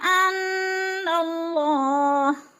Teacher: انا پہ نون مشدد ہے، غنہ کریں گے، ناک میں آواز لے جائیں گے، اللہ، اللہ کو پر پڑھیں گے اس لیے کہ اللہ کے سے پہلے لفظ نون کے اوپر زبر ہے تو اللہ پورا پر پڑھا جائے گا یعنی موٹا پڑھا جائے گا۔